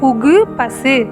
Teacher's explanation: வல்லினம் அல்லாத உகரங்களும் ஒரு மாத்திரை அளவுக்கு முழுமையாகவே ஒலிக்கும்.